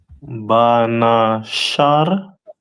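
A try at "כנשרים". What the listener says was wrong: That first letter is a Ka.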